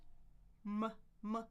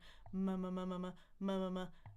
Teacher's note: Where's the air when I say an M? It's actually in my nose. It's called a nasal sound. We have three nasals in English. · So M is what we call bilabial two lips.